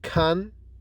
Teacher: K is unvoiced and fortis, that is produced without vibration in the vocal cords and produced with more force than g. · Those two velar sounds are made with the total closure, that is, we stop the r completely since they are plosives, using back of the tongue against the soft palate.